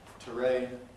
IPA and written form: təˈreɪn (terrain)